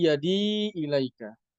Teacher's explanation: Yadiya ilaika menjadi yadi ilaika. Ya, menjadi mad muttasil dengan 4 harokat